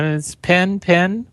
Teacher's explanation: we pronounce the words pen and p i n the same way